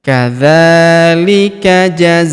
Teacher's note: Huruf za kita panjangkan empat atau lima harakat karena di depan huruf za terdapat alif yang di atasnya terdapat tanda garis bacaan panjang empat atau lima harakat.